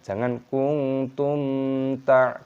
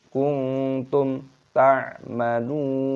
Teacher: Perbedaannya kalau nun sukun dengan ta dibaca ikhfa, kalau mim sukun bertemu dengan ta dibaca idhar syafawi, dibaca jelas, jangan didengungkan